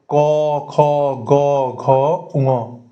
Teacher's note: অর্থাৎ ক বর্গ কন্ঠে এসে আটকাচ্ছে।